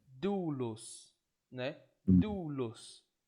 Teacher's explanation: Aqui você tem o som forte claramente no do, então, e o los bem suave, né? E aí, nesse sentido, eu vou colocar o acento circunflexo no ditongo, tá?